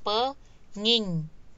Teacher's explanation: Jadi dia bergeser, engnya jadi bergeser mengikuti ing yang ada di kata dasar. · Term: penggeseran